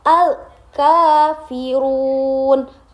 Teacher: alif lam qamariyah bertemu dengan huruf qamariyah yaitu berupa kaf. Jadi dibacanya harus jelas.